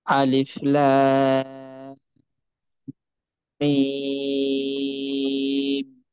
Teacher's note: মিমে গুণনা থাকবে, তারপর গিয়ে অর্থাৎ টান হবে। মিমের লাম, এরকম কিছুটা সময় ধরে রাখতে হবে। · লামে চার আলিফ টান দেবো।